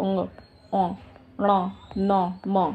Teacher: नाक से सब बोले जाते हैं, नाक बंद कर लो, बोल के देख लो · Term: नासिक